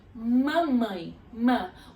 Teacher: o m ele esbarra nos dois lábios nos de baixo e nos cima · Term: bilabial